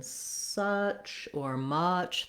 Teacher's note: the clear stressed schwa, my tongue is central, also lax, so not high or low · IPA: ə